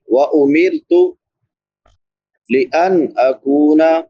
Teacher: نون ساکن پہ اظہار ہوگا کیونکہ بعد میں حروف حلقی میں سے حمزہ ہے